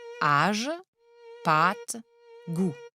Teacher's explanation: le chapeau vient ouvrir la voyelle qu'il marque la voyelle est donc allongée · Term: accent circonflexe